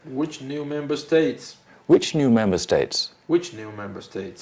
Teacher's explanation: You're reading like a statement. It has to be a question. Goes up.